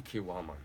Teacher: after a long vowel, the k becomes a g automatically